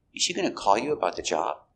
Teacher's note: And the intonation goes up at the end.